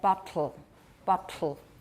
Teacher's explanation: that would be a syllabic l because there's no vowel there at all my tongue does not leave the alveolar Ridge at all